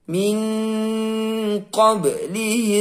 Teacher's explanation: sukun juga Qolqolah Sugro kita baca memantul